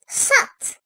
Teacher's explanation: Dil ucu ve yanlarıyla ön dişlerin iç yüzünden keskin olarak çıkarılır. Kalın seslidir.